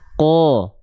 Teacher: Jadi vokal O-nya itu terhasilkan karena pangkal lidah kita naik.